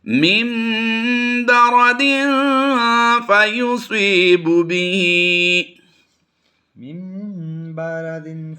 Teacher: اسی طرح نون ساکن کے بعد بھی اگر حرف با آ جائے تو ہم وہاں پر بھی کیا کرتے ہیں؟ نون کی آواز کو میم سے کنورٹ کرتے ہیں.